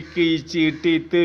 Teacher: மிகு இடங்கள் அந்த இடத்துல வல்லினம் மிக அழுத்தமாக இருக்கிறது, டபுள் சவுண்டில் வரும். வல்லினமானது ரெண்டு சவுண்டில் வரும். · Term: வல்லினம் மிகு இடங்கள்